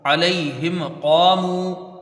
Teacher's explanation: میم ساکن کے بعد قاف آیا ہے تو یہاں اظہار شفوی ہوگا، بغیر غنہ کے میم کو پڑھا جائے گا